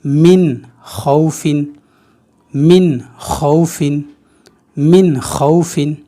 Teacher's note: نون ساکن جو ہے اظہار پڑھا جائے گا، یعنی اس کو ظاہر کر کے پڑھیں گے۔